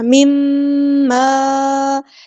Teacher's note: نون ساکن کے بعد ہے میم، تو یہاں پہ ہو رہا ہے ادغام مع الغنہ